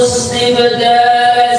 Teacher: Nah ini ba yang sukun kita tunaikan sifat qalqalahnya